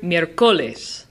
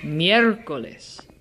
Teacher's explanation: you can hear the emphasis is on the third to last syllable